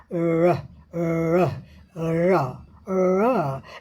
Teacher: तो जब भी आप ध्वनि र का उच्चारण करें तो कभी भी जीभ स्पर्श नहीं करेगी